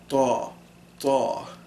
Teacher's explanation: when you do ta, the tongue curls up, it points at the top of the tip of the tongue is pointing at the roof of the mouth, kind of.